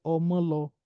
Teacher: there is a high tone on the second o